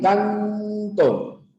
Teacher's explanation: Tu boca se cierra un poquito, canto, y la N está chocando con los dientes. O sea, tu lengua ya no va hacia los alvéolos, sino va hacia este lado, hacia tus dientes.